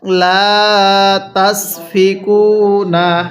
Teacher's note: দেখুন লামের মধ্যে কিন্তু এক আলিফ টানতে হবে